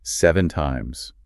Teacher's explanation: But when you raise your pitch at the end 7 times, that rising sound turns a statement into a request for an opinion. You are leaving the door open for the other person to respond. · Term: rising intonation